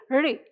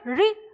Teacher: ये री ध्वनि, इस तरह की ध्वनि आपको किससे निकालनी है? मूर्धा से।